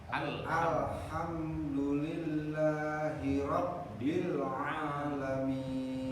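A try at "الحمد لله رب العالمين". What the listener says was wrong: Bagus ya.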